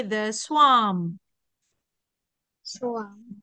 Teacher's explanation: you don't have to say the R sound. You just say the swarm.